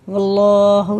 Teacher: अल्लाह का लाम पुर है, रा भी पुर है